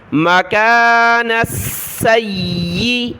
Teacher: سین اور یا دونوں کے اوپر تشدید ہے، تو تشدید کی وجہ سے سین اور یا کو جمع کر سختی کے ساتھ پڑھا جائے گا۔